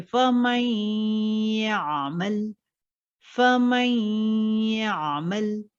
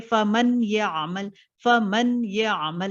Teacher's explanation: मीम और या mix up हो जाते, मीम और या अलग अलग सुनाई नहीं देता आपको · नून साकिन है उसके बाद या आ रहा है, तो क्या नून साकिन हम लोग नहीं पढ़ते हैं, लेकिन आवाज मिक्सअप हो जाते मीम और या में, फमई, नून की आवाज भी आ रही है, देखिए फमई आमल, फमई आमल, तो इसमें नून को अलग से नहीं पढ़ते, फमन ये आमल, फमन ये आमल नहीं पढ़ते, फमई आमल, और इसमें गुन्ना होता है 100%।